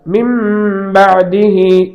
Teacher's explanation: நூன் இருக்கும், ஆனால் நூனுடைய ஒலி இருக்காது, மீமுடைய ஒலி தான் இருக்கும். இதற்கு இக்லாப் என்று பெயர்.